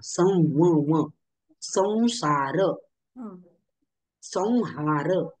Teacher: अनुस्वाराच्या पुढे जर र व श श स ह ही व्यंजने आली तर अनुस्वाराचं उच्चारण आपण व सारखे करतो, नाकामधून व, अनुनासिक न प्रमाणे.